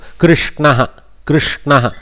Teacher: when we say Krishna, we don't go front of the mouth shakara, we go back of the mouth, because from kantha, back of mouth shakara is congruent. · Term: shatkona sha